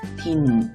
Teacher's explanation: 혀의 앞쪽이 먼저 디귿을 발음했다가 조금 뒤로 옮겨서 이를 발음합니다. 딘, 이렇게요. 그런데 진은 뭔가 비슷한 위치에서 지읒과 이가 소리가 나고 있어요.